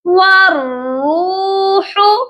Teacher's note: واؤ کو ڈائریکٹ را کے ساتھ ملانا ہے، را کو ہیوی پڑھنا ہے